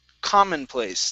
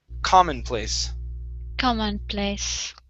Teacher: this word here is pronounced commonplace the stress is at the very beginning